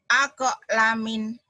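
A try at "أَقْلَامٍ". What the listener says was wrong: La-nya panjang. Aqlamin.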